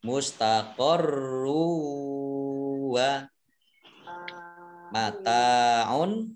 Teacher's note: rok domah tanwin bertemu dengan huruf wawu bacaan idgham bi-gunnah. Idgham masuk bi dengan gunnah mendengung ya, mendengung wawu. Mustaqorru wa mataun tak fathah alif mad tabi'i panjang 2 harokat.